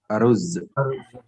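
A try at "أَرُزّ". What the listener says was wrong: Jadinya aruz, ya, aruzun. Seharusnya ada 2 zai-nya ya, karena tasydid di situ.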